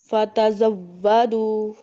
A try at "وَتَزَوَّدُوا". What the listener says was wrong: فا نہیں ہے، واو ہے. وتزودوا